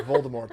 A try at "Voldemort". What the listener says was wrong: Voldemort. Voldemort. I think it's Voldemort with the T. that, yes, there's a T at the end.